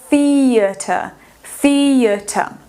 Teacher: E esse I vai ficar com um som de I comprido.